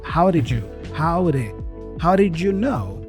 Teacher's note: know how did notice that also the D there for did the first did is kind of a flap d as well just like the flap T